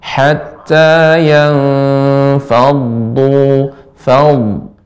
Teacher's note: dhad sifatnya mengalir, tebal dan mengalir